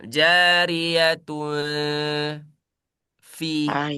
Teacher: Makhraj huruf fa ada di batonis syafah, ada di perut bibir.